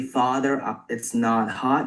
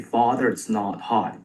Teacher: You also have a rounded father vowel.